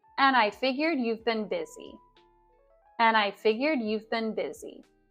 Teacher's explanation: the and aligns with the I here. So we don't pronounce the D at the end.